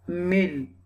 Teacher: And this meem sound will connect with the lam.